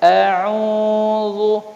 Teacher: Dia beda au ya dengan au. Kalau ain itu dia makharijul hurufnya di tengah-tengah kerongkongan kita dan dia itu mengalir